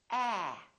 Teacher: your lips are open and your tongue is down and your tongue is tense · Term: a sound